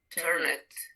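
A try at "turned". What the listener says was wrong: Turn it. Pronuncia turn y agrégale el sonido de d. Inténtalo. Ya te das cuenta que nunca va a ser turn it. ¿Por qué? Porque no termina en T o D. turn.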